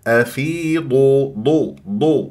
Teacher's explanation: الضاد اتكاء من احدى حفتي اللسان مع ما يحاذيه من الاضراس العليا